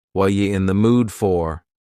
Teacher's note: What are you in the mood for? The word r is gone and the word you has been reduced to yah. So when we link together what and you super fast.